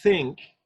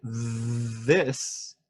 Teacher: Think, you hear the unvoiced one. Sure. But in the word this, it's voiced.